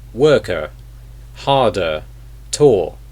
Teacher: the British accent for example would be the r sound because in British English the r really is not pronounced at all